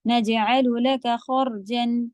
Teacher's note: جیم بھی قلقلہ کا لیٹر ہے تو آواز پلٹے گی.